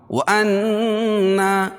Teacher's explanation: ایک الف کے برابر ناک میں آواز کو لے کر جائیں گے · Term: غنہ